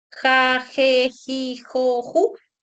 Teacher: Cuando dices ja, je, ji, jo, ju, trabaja la lengua con el velo. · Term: sonidos velares